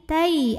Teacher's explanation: Tai, ada huruf lin karena ada ya sukun yang sebelumnya ada huruf berbaris fathah, maka dibacanya kita lembutkan saja